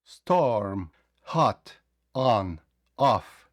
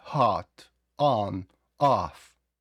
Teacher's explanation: Але найкраще для точнішої вимови вам потрібно просто опустити нижню щелепу, не складувати губи на о